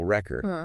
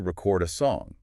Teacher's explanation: if you stress the first syllable it's a noun like a vinyl record but if you stress the second syllable it becomes a verb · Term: word stress